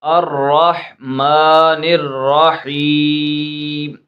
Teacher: تو یہاں پر جو دو ح ہیں ان دونوں کو اپنے مخرج سے نکالنا ہے، ٹھیک ہے، ان کو غلط نہیں پڑھنا، اس ح کی جگہ دو آنکھوں والی ح جو ہے اس کو نہیں پڑھنا، اس ح کو ہی پڑھنا ہے، یہ ح جو ہے حلق کے درمیان سے ادا ہوتی ہے